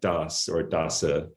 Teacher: In Eastern varieties, you'll still get das or dasa or something like that with a T at the beginning.